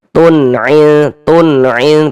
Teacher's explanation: Jadi bunyi nun sukun atau bunyi tanwinnya dibaca jelas. Kemudian dia tidak didengungkan maka dibaca pendek saja. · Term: izhar halqi, idhar halqi